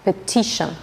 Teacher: T ilə N arasında bir şın səsi əmələ gəlir